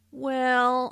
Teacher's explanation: Notice how the vowel is drawn out to sound like well.